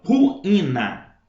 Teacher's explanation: são duas vogais Só que cada uma uma sílaba diferente então é um iato